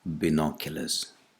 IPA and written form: bɪˈnɒkjələz (binoculars)